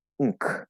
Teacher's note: But whether it's a glottal stop K or an actual pronounced K, if you see NK together, it's going to be unk, using the back N plus K, not a normal N plus K